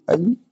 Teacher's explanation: कंठ और तालु दोनों से मिलकर बोला जाता है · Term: मिश्रित